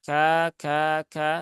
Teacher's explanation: pastikan sifat hamesnya keluar